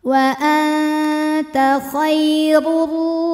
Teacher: Cara membaca huruf ra-nya ini adalah ditebalkan pangkal lidah kita naik. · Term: tafkhim